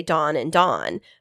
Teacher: that's the low back vowel merger